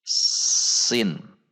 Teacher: sin itu ujung lidah berada di belakang gigi seri dan posisi lidah lurus